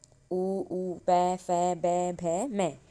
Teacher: इनका उच्चारण हम होठ से करते हैं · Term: ओष्ठायाः वर्णः